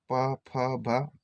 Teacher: ठीक है, तो देखो प फ भ हमारे होंठ से है ना, होंठ से हो रहे हैं, आप बोल के देख सकते हैं प फ भ होंठ से चिपक रही, फिर खुल रही है होंठ से